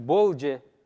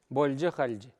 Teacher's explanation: Вот здесь больдже. Если после Л идет Дж или Ч. Две согласные. В таком случае Л произносится мягко, мягкий знак не пишется.